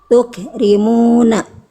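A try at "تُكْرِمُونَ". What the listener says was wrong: Jangan ada jangan ada jangan ada mantuk. Ada e-nya sedikit tadi. Cukup percikan aja.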